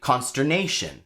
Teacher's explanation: The stress in that word is nay.